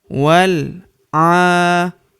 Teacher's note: Ini hamzah wasol atau hamzah penyambung. Wal a, huruf a kita panjangkan 2 harokat karena terdapat tanda alif kecil di atasnya